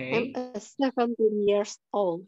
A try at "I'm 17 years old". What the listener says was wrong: T-nya mana, Miss? D-nya mana, Miss? I'm 17 years old. I'm 17 years old. I'm 17 years old. Teen. I'm 17. Old.